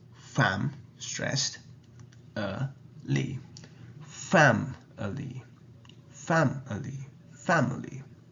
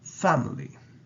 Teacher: although the word family has an i in the middle it's actually a schwa sound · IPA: ə